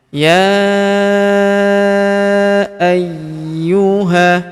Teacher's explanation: Huruf ya kita panjangkan empat atau lima harakat karena di atas huruf ya terdapat tanda garis bacaan panjang empat atau lima harakat.